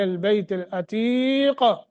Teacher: قاف کو موٹا کر کے قلقلہ کر کے پڑھیں گے کیونکہ ہم یہاں رک گئے ہیں